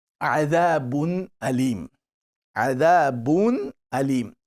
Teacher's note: you don't make any gunna sound. You make a clear sound. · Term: Izhar